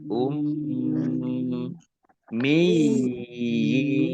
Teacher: mim tasdid ini dibaca ghunah atau mendengung tahan dua harakat